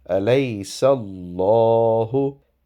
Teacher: Seen has a fatha or a zabar before the word Allah. That is why it is pronounced with a round shaped mouth.